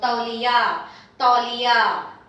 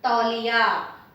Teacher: Li is short but ya is long. Tauliya. And tauliya means a towel.